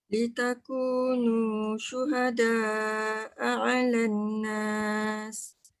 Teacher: Alan nas tu jangan lupa nun sabdu mesti cukup 2 harakat dengung.